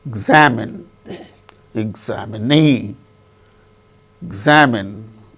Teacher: in the case of the word examine second syllable gain stress in the case of the word examinee the knee fourth syllable